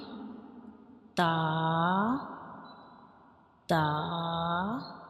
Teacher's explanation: Can you see, this is the inner view of mouth, and when we pronounce ta, we touch the tip of tongue to the gums of upper front two teeth